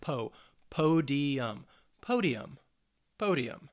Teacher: it's three syllables the stress is on that first syllable